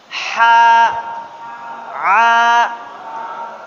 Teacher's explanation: dia tempat keluarnya sama dengan huruf ain, yaitu wasatul halq, tengah-tengah tenggorokan. Nah, jadi huruf ha dengan huruf ain keluarnya dari tengah tenggorokan di sini nih. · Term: huruf ha kecil